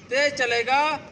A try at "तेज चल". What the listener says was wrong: चलेगा नहीं, तेज चल बोलना है,